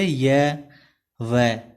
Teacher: बीच में से हवा निकलती है, दोनों साइडों से बंद रहता है। व्यंजनों का वर्गीकरण प्राण श्वास के आधार पर किया जाता है, जो निम्नलिखित है। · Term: अर्धस्वर